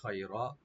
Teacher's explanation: রার উপরে যে জবরটা আছে এটা ডিপ করে পড়তে হবে